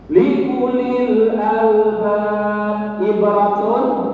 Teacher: Likulil albab ibratun, ini adalah idhar syafawi. Mim mati ketemu dengan ain, maka harus diidharkan, dijelaskan.